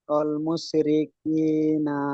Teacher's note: মুশরিকি, না তো হারকাত আছে, অল হারকাতকে তাড়াতাড়ি পড়তে হয়, টান দেওয়া নিষেধ।